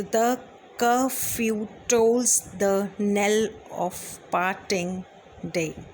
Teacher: आयैम्बिक जो शब्द है बच्चे वो आयाम से ही बना है, IAMB, जिसमें क्या होता है पहले unstressed syllable and then it is followed by a stressed syllable